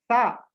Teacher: Sa, tongue touches the teeth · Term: Dantya